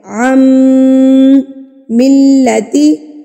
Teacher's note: میم مشدد ہے تو میم مشدد پر ہم نے غنہ کرنا ہوتا ہے